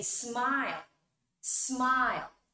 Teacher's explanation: When you say smile, smile. The last sound is L. That's a voice sound.